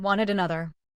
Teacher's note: Keep the first syllable strong and let the ID syllable stay short. Then continue into another, keeping the word light and natural. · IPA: /ɪd/